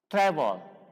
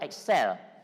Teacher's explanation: The stress is on the first. Excel is on the second.